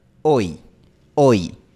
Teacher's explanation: En español es más cerrado, la lengua está más arriba y la lengua está más en el frente. Hoy, hoy. Y en inglés, la lengua termina un poco menos arriba y un poco menos en el frente. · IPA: [oj]